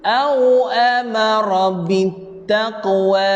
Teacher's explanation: Pada ayat ini jaga huruf qaf, qalqalah sughra. Waqaf dua harakat.